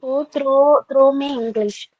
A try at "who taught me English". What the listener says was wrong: Through അല്ല, taught ആണ്. TAUGH പഠിപ്പിക്കാൻ.